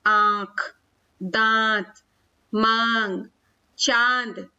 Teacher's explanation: ठीक है, तो इनका उच्चारण करते समय हमें न केवल नाक बल्कि नाक के साथ मुंह का भी प्रयोग होता है। नाक से भी आवाज निकलती है और मुंह से भी आवाज निकलती है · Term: अनुनासिक